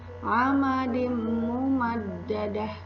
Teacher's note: suara tanwinnya dimasukkan ke huruf mim dengan dengung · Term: idgham